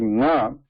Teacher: the nasal involvement is there. The part of air passes through nose, partially. Okay? So partially through mouth, partially through nose.